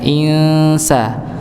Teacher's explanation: jadi nun sukun ketemu sin termasuk huruf yang tipis, maka ditipiskan ketika disamarkan